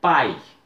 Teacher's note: o pai é um ditongo oral eu só abro a boca para falar não é nasalado